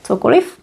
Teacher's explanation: The v sounds like f